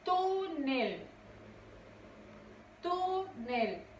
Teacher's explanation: Su sílaba tónica es tu.